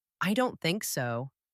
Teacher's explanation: When you say, I don't think so, you stress think to show your opinion